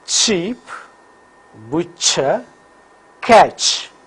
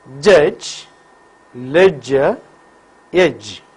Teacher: They are palato-alveolar affricates, ch and j. During the articulation of these palato-alveolar affricates, the tip and blade of the tongue makes a firm contact with alveolar ridge. At the same time, the front of the tongue is raised towards hard palate in readiness for the slow separation of these two articulators. · Nasal passage is closed. Vocal cords vibrate for j. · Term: voiced palato-alveolar affricate